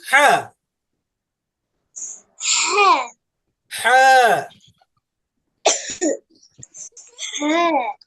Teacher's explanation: হাঁটা পড়ার সময় একটু কষ্ট হবে, গলাটা একটু চেপে আসবে, ঠিক আছে। গলাটা একটু সংকুচিত হবে, সংকীর্ণ হবে।